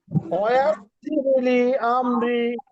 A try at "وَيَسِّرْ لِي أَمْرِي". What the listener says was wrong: আরেকটু সিটি করবেন।